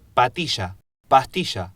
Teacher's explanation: Pues en estas zonas sí se pueden diferenciar estas dos palabras, porque la A de pastilla es más larga que la de patilla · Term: vocales largas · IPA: [pa:.'ti.ʃa] [pa.'ti.ʃa], [pa.'ti.ʃa]